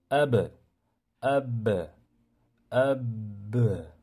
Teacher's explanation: Qalqala ana shunday sukunga uchraganda birinchi sukun qilasiz, ab deysizda keyin portlatasiz.